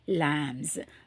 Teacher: எஸ்ன்னு சொல்கிறேன், ஆனால் உச்சரிக்கும் போது ஜின்னு சொல்கிறேன்